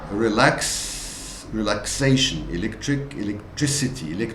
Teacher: This K sound is affected by the front vowel E, so it becomes an S sound.